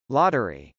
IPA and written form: lˈɑtɚi (lottery)